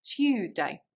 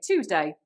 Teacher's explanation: one feature which really stands out from East Anglia is y dropping